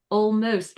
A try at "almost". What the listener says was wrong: Okay, so you opened nice and big for the AL, but we don't want that.